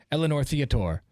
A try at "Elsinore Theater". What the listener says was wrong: The Elsinore Theater. There's a mystery S in there. Elsinore.